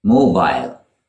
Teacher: mobile with a long ey sound at the end almost like ale mobile now that is the British pronunciation of this word it